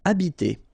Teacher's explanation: remember that in French, the H, like that here, is not pronounced at all. Okay, so you don't pronounce it, so you get the first sound is the vowel A here.